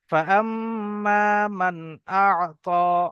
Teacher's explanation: মিমটা গুন্না হবে এবং তার সাথে সাথে আলিফ মাদ্দা এক আলিফ টান হবে